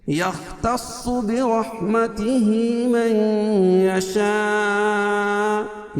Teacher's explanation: یختص، خا کو پر پڑھیں گے، صاد کو بھی پر پڑھیں گے. یختص دونوں حروف مستعلیہ میں سے.